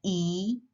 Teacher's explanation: yang biwonsun atau yang vokal rata itu ada i, jadi mulutnya rata ya, gitu kan. E, itu juga mulutnya rata dan ada e.